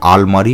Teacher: যেমন পর্তুগিজ আরমারিয় শব্দ থেকে বাংলায় তৈরি হয়েছে আলমারি শব্দটি এখানে দুটি র এর মধ্যে একটি পরিবর্তিত হয়ে ল হয়ে গেছে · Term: বিষমীভবন